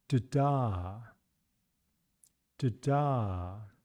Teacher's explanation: We can really hear that this first syllable is shorter and lower in pitch. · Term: unstressed syllable